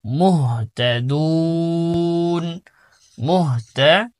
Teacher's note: এখানে মূলত ছিল মুহতাদুনা, এখানে অক্ষ করার কারণে শেষের হরফে নুনের কি করতে হবে, সাকিন দিতে হবে এবং 3 আলিফ টেনে পড়তে হবে।